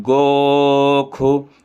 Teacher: मानो गोखु, इसके बाद गोखु, यहाँ भी खा ही उच्चारण होगा। यजुर्वेद मध्यान्हनी शाखा में हमेशा जो है तो इस शा को खा बोला जाता है